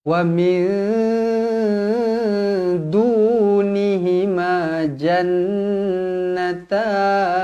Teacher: Nun yang bertanda sabdu wajibul ghunnah dengung dua harakat